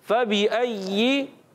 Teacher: या को मुशद्दद रखना है और इसके नीचे ज़ेर है, बगैर खींचे बगैर झटका दिए मारूफ अदा करेंगे।